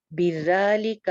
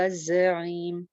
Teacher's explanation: آ رہے ہیں، ذالک اور زعیم دونوں میں ڈفرنس ہے، زال بغیر سیٹی کے اوپر والے 2 دانتوں کے کنارے سے، جبکہ زا جو ہے وہ سیٹی کے ساتھ نیچے والے دو دانتوں کے کنارے سے